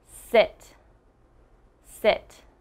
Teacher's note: i'm almost pushing out a puff of air when i say it and my mouth is not moving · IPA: /ɪ/